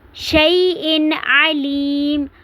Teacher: اظہار کرنا ہے، آواز کو ناک میں نہیں لے کے جانا، شَيْءٍ علیم نہیں پڑھنا، شَيْءٍ علیم پڑھنا ہے۔